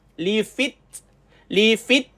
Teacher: Bila jumpa dengan ta sukun tuan-tuan matikan ti dulu baru keluar angin